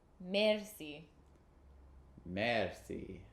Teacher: instead of the guttural R that they have, we roll the R.